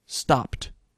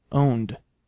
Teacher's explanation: Stop ends in a voiceless consonant. Own ends in a voiced consonant. And so you get one or the other based on the environment. · Again, phonologically motivated, stop ends in a voiceless consonant, own ends in a voiced consonant